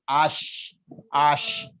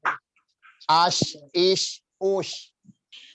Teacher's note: dia punya sifat tafashi, namanya itu banyak angin yang menyebar di rongga mulut